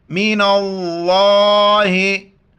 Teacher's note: नून को लफ्ज़ अल्लाह के दूसरे लाम के साथ मिलाएंगे।